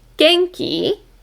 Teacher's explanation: we have to have like a rising intonation in our voice